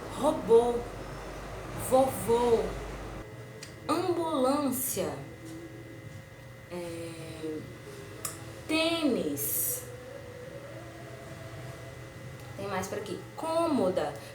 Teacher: o som da vogal é mais fechado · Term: acento circunflexo